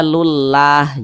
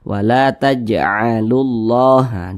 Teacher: maka lafaz Allah tuh dibaca tebal, dibaca tafkhim